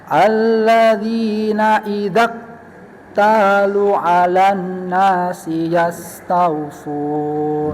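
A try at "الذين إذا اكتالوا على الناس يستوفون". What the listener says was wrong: Cuma lunya masih pendek ya, harusnya panjang ya. Idza talu 'alan, ayunkan. Talu 'alan gitu.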